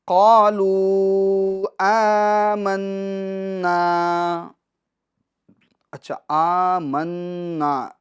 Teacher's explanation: قالوا آمنا، اچھا آمنا، نا میں حرف مشدد نون ہے، تو نون مشدد کا گنہ ہوگا 1 الف کی مقدار۔